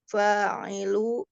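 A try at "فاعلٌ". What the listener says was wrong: Fa'il. Tanwin kan Umi fa'ilun.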